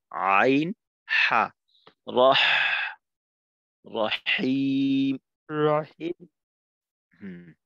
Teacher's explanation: হায়ের মাখরাজে আর একটু চাপ দাও, হলকের মধ্যখান থেকে